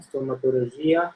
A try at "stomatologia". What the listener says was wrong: Il faut faire un effort avec le G roumain. Le G roumain, c'est G. Ce n'est pas G comme en français, c'est G. Donc, stomatologia. Et non stomatologia. Stomatologia.